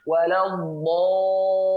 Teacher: ketika ada mad asli datang setelahnya tasydid, maka setelah dia dipanjangkan di ujungnya ada nabr ya, yaitu adalah ya seperti adalah ad-dhabtu, tekanan sedikit seperti itu ya.